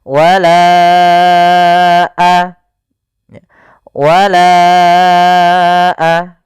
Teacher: Maka kita panjangkan huruf lanya sepanjang empat harakat atau lima harakat. · Wala baru baca a. Panjangkan la-nya dulu 4 harokat baru lepas. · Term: mad jaiz munfasil